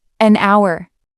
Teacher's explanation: Hour starts with H, but the H is silent. So the word starts with a vowel sound. That's why we say an hour.